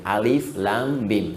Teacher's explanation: Alif harful hawa, lam ke lisan, mim di bibir.